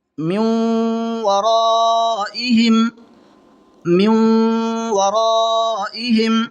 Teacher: नून साकिन के बाद में वाव आ रहा है, तो इदगाम माल गुन्ना होगा, मिला करके गुन्ना के साथ पढ़ेंगे।